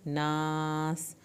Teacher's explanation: آخر میں سین پہ سیٹی کی آواز نکلے · ناس سین کو سیٹی کے آواز کے ساتھ پڑھنا ہے